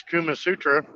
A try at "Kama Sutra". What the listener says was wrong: Kama Kama Sutra. Not Kuma, Kama.